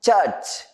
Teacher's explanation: Ch is a voiceless post-alveolar affricate. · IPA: /tʃ^tʃ/